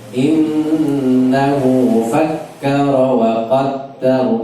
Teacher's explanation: Tiga tasdid nun, kemudian kaf, fakkara, dal wa qaddar. Yang innahu dengungnya lebih lama.